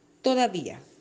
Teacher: cuando se acentúa la vocal débil se rompe el diptongo y las sílabas se separan formando una palabra grave